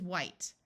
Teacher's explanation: H together in most of the US sounds like w but in some parts it sounds like H where the H sound is pronounced before a w rather than the H being silent